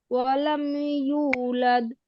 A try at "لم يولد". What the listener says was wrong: তারপরে যে ইউলাদ, ইউ টান হয় নাই, ইউলাদ, ইউ টান হবে না আপু? দেখেন তো।